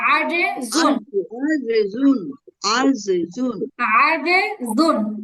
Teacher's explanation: ফাজরে, ফাজরে, আচ্ছা তারপরে ফাজরে, এখানে আজিরুন, আজিজুন, আজিজুন, জিম শক্ত আজিজুন, হবে, জিম শক্ত হবে, জিবার মাঝখান উপরে তালুতে লাগবে।